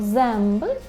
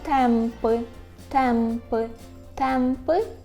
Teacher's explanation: Отже, у позиції перед БП ми з вами маємо звук М.